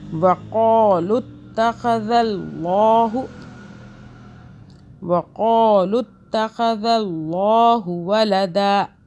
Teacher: قاف کو موٹا پڑھا، تا پہ ذرا طاقت سے پڑھنا ہے